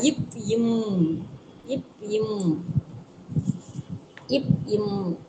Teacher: மேல் கீழ் இதழ் பொருந்தும் எழுத்து